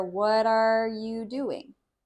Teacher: it doesn't sound like there's any space between the words, but especially between what and are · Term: connect